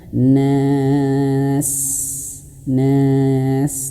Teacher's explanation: Singkatnya, ringkasnya ayah bunda perhatikan, kalau di sini nas ada alif seperti ini nas, dan di sini ada huruf sin yang jadi mati ya, mati karena di akhir ayat, maka panjangkan 2, 4 atau 6 harokat. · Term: 4 harokat